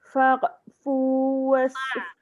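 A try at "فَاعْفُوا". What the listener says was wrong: Jangan fa' kok. Ada bunyi kok tu kan? Tak boleh. Fa'. Ya bawah. Fa'fu. Sad. Was. Jadi sin. Was. Tu baru sad.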